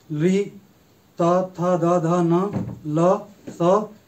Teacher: इनका उच्चारण स्थान दांत है